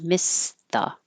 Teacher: Missed the, you're not going to hear missed because you don't need to release the t noise and there's a TH after it